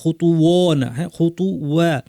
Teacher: খ ত ভারী রাখার সাথে সাথে ওয়াকে পাতলা রাখার চেষ্টা করতে হবে, ছোট আলিফ আছে টানতে হবে।